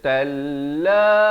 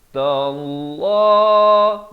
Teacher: Lafz jalalah dibaca tebal. Jangan baca talla.